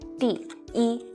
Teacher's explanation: when e is used as a numeral in sequence such as when you're counting it is the first first flat tone